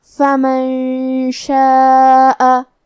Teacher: کلمت فمن کے آخری میں نون ساکن ہے، پھر حرف الشین ہے، یہاں بھی حکم ہے اخفاء تو ہمیں یہ حکم کو غنہ کے ساتھ ادا کرنا ہے، فمن شاء۔ کلمت شاء میں مد ہے، یہ مد واجب متصل ہے تو ہم اپنی آواز 4 مد کے برابر لمبی کریں گے۔